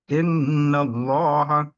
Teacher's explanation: Allah dibaca tebal. Tafkhim kalau dengan didahului fathah atau dhamma tebal.